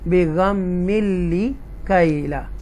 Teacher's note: اور تنوین کے بعد لام آ رہا ہے، لام جو ہے وہ حروف یرملون میں سے ہے، تو یہاں پر ہم اس کو کلیئر پڑھیں گے، اس کو نا لام کو کلیئر پڑھیں گے، گنہ نہیں کریں گے